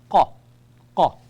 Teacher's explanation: The letter qaf, it is a throat production, the upper throat